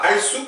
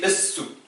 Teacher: Parce que c'est une lettre solaire. Donc c'est pas al-souk, c'est es-souk.